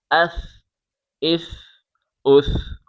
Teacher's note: نرمی کے ساتھ پڑھیں، زبان باہر نکال کے پڑھیں۔ حمزہ ثا زبر اث، حمزہ ثا زیر اث، حمزہ ثا پیش اس، اث اث اس۔